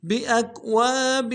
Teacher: کے ساتھ ملانا ہے، با کو نرم سے ادا کریں گے، حمزہ کو کاف کے ساتھ ملائیں گے، کاف کو نرم سے پڑھیں گے ، واو کے ساتھ الف مدہ ہے، ایک الف دال میں